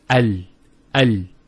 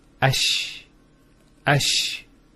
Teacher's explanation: The actual points of articulation of the Lam and the Sheen are very close to each other. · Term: articulation point